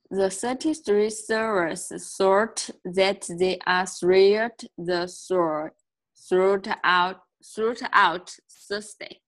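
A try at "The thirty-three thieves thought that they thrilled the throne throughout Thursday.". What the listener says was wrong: Okay, so not one of those was pronounced correctly because your tongue never came out. The 30, that tongue almost stays out throughout the sentence because there's so many THs, right? The 30 thieves thought that they thrilled the throne throughout Thursday. My tongue almost stays out the whole time.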